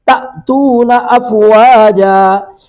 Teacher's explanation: تا زبر حمزہ تا، یہاں پہ جھٹکا لگائیں گے